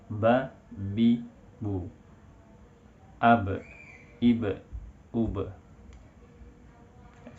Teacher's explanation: Suaranya tidak bisa dijalankan. Ab nggak bisa kita jalankan, pasti tertahan karena bibir atas dan bibir bawah menutup